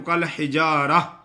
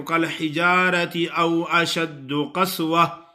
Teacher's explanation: وقف کی حالت میں ہا بن جاتی ہے یہ تا، اور وصل کی حالت میں پھر تا ہی پڑی جاتی ہے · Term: وقف بالابدال